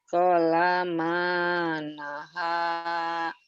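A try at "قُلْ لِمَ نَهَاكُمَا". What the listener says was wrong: Udah pintar cuman dilanya aja. Dilanya nempel bibirnya. Kolama nahakuma.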